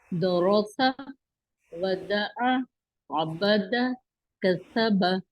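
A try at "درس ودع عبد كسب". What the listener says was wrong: تھوڑا تھوڑا سین میں دونوں جگہ، درس اور کسب کے سین میں دونوں جگہ فا جیسی آواز محسوس ہوئی، وہ تھوڑی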